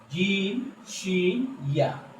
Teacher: এরপরে 7 নম্বর মাখরাজ জিহ্বার মধ্যভাগ উপরের তালুর সাথে লাগাইয়া, জিহ্বার মাঝখান তার বরাবর উপরের তালুর সাথে লাগিয়ে চাপ দিয়ে 3টি হরফ জিম শিন ইয়া